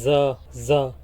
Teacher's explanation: ये जबान की नोक को ऊपर और नीचे दोनों दांतों के अंदरूनी किनारे पर टच करने से अदा होता है